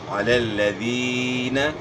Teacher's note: یعنی یہ یا مدہ ہے، یا ساکن سے پہلے زیر ہے، یا مدہ ہے، اس کو آپ نے ایک الف کے مقدار کے برابر کھینچنا ہے ، علی الذین۔ اور زین بھی نہیں پڑھنا، ذال کو زا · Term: یائے مدہ